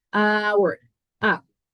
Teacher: Pero en este caso nuestra H va a ser muda